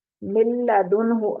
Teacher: نون ساکن اور تنوین کے بعد جب لام یا را میں سے کوئی حرف دوسرے لفظ میں آ جائے، دوسرے کلمہ میں آ جائے تو وہاں بغیر غنہ کے ادغام کریں گے اور نون کی آواز بھی باقی نہیں رہے گی. ٹھیک ہے، بغیر غنہ کے ادغام ہوگا، غنہ نہیں ہوگا، ناک میں آواز نہیں جائے گی اس کی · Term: غنہ کے بغیر ادغام